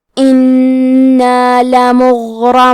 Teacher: کلمت انا میں نون پہ تشدید ہے لہذا ہم 2 حرف کے برابر نون کو پڑھیں گے